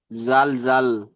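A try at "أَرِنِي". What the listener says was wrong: জালও নয়। এটাকে জাল পড়ছেন? এটা তো র আছে এখানে। ইয়া নেই। র জের রি, আরি।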